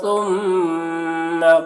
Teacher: سا کو باریکی کے ساتھ ادا کریں گے، میم مشدد ہے، میم میں غنہ کریں گے